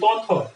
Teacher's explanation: এগুলো এই দুটা কিসের মধ্যে পড়লে তাহলে অঘোষ ধ্বনি, কম কাঁপবে।